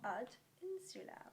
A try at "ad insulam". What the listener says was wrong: Insulam. It's a very long I, that one.